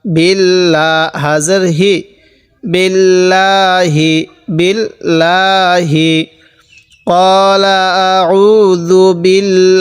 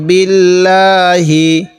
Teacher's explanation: এই আল্লাহ শব্দে লামের পূর্বে এই জের থাকার কারণে এই লামটিকে আমরা চিকন করে পড়বো